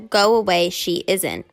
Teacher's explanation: An H sometimes appears where it is not wanted. Between the two vowels